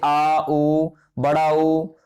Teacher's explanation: जिन स्वरों के उच्चारण में जीभ का पश्च भाग यानी पिछला भाग कार्य करता है उसे पश्च स्वर कहते हैं